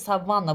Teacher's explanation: Savanna deyirəmsə savanna vurğu vana düşəcək. Na vurğu qəbul etməyəcək.